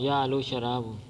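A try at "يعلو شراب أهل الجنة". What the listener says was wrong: یعلو شرابو نہیں پڑھنا، یعلو شراب اہل الجنت. یعلو شراب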